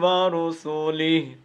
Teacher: اب دیکھیں نا یہ ہاں کو ہم کیا کر رہے ہیں, لمبا کر رہے ہیں, اور یہاں پر ہم نے چونکہ رکنا ہے, سٹاپ کرنا ہے, تو ہاں کو ساکن کر دیا ہے